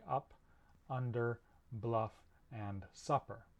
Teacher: It's represented by an upside down V, but this sound, this sound, is normally spelled in English with a U, so there you go. Right, so this vowel is a mid-central, unrounded vowel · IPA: ʌ